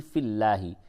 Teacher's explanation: لام زیر فی اللام کھڑا زبر لا، حاضر ہی فی اللہ، یہ لام کو باریک کر کے پڑھیں